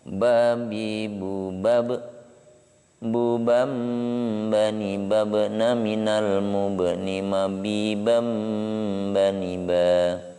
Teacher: Ba dan mim, dua huruf yang keluar dari asy-syafatain ketika bibir kita tertutup. · Nampak sekali ketika huruf ba ini kena sukun, maka dia mantul. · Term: qalqalah